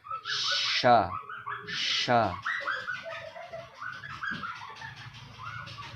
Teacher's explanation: menyebarnya suara huruf shin dari tempat keluarnya sehingga membentur dinding bagian dalam gigi atas dan bawah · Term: Tafashi